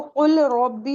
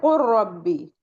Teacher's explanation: तो यहाँ पे हम इसको कुल रब्बी नहीं पढ़ेंगे, इसको हम पढ़ेंगे कुर रब्बी। क्यों, लाम जाके इसमें रॉ में मर्ज हो जाएगा